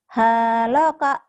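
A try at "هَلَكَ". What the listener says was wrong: Nggak ada yang panjang. Halaka.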